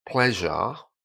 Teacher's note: at the end with a word like pleasure, the R disappears again and is replaced with an A.